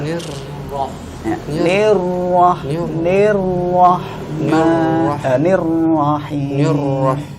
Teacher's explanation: Cuma dia kurang ditakrir, kemudian di huruf ro yang kedua dia langsung setelah ni ini dia langsung masuk ro-nya itu langsung tebal. Harusnya tipis dulu. Nir baru ro-nya tebal.